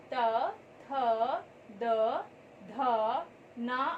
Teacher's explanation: तवर्ग में त, थ, द, ध, न आते हैं और इनका उच्चारण करते समय हमारी जीवा दांतों को स्पर्श करती है, इसलिए इसे दंतव्य वर्ग भी कहा जाता है।